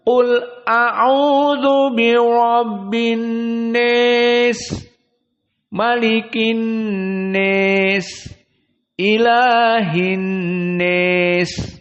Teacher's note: Kenapa dibaca seperti ini? Karena qiraah Abu Amr membaca kalimat an-nas pada setiap Al-Quran dibaca al-imalah al-kubro · Tidak dibaca an-nas tetapi an-nis. Khusus lafaz an-nas saja.